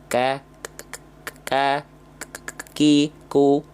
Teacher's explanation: Kaf itu punya sifat sama kayak huruf ta ya punya sifat namanya hams